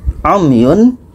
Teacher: Umyun, ada mim mati, mim mati bertemu ya, ini bermakna ya tidak termasuk, ini tidak dengung. Umyun, mim mati bertemu ya tidak dengung.